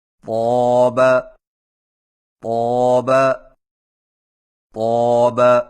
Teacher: طا کی ادائیگی میں زبان کی نوک کو سامنے والے اوپر کے 2 دانتوں کی جڑ سے لگا کر اور زبان کے پچھلے حصے کو اوپر کی طرف بلند کرتے ہوئے موٹی آواز میں پڑھیں